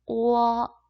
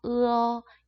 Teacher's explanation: 얘는 오에서 시작해서 어로 끝나고 얘는 으에서 시작해서 어로 끝나고 오어, 으어 이렇게 발음하는 애.